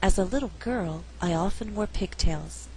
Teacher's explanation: Here we did not stress wore.